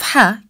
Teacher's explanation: the sound of ha comes from the middle part of throat we don't say it as the english sound ha as in house we say it as from the middle throat sound is pronounced